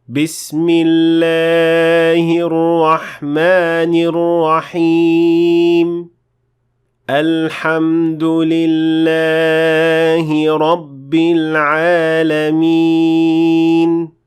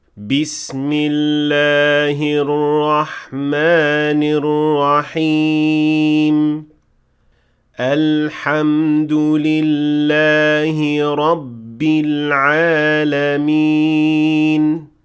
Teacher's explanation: the word Allah came in the middle of the ayah and should not be extended more or less than 2 counts